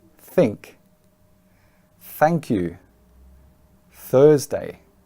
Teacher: the other type of th of course the unvoiced sound